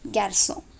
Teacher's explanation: This accent will eliminate the k sound and add s sound.